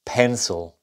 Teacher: observen que la i casi ni suena